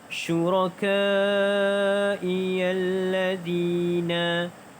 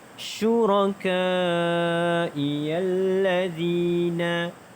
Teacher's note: Syuraka dibaca dengan panjang 5 harakat kerana mad wajib muttasil, iaitu mad asli bertemu dengan hamzah dalam satu kalimah.